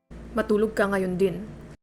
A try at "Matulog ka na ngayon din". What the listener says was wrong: I still don't even hear it. Na was not pronounced.